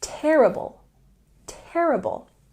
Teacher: say terrible with the stress on the first syllable